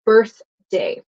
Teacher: So you have birth, no vibration, but the D is like it vibrates, right?